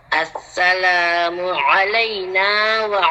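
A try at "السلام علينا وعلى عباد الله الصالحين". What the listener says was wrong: আইনের মধ্যে টান দিয়ে ফেলছেন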